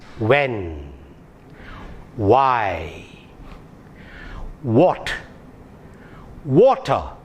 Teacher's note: now it is actually a rounded lip consonant your lips should get a rounded shape when you pronounce that when why what water you understand it is a rounded lip